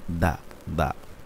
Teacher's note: জিব্বার আগা থেকে তার উপরে দুই দাঁতের গোড়ার সঙ্গে লাগাই দাল